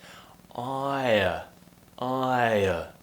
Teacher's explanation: I, like in goodbye, I, and then we're finishing with a nice schwa sound. Ire. So just relax your mouth at the end.